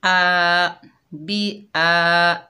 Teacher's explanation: हमज़ा के ऊपर खड़ा ज़बर है, एक अलिफ की मिक़दार खींच कर पढ़ेंगे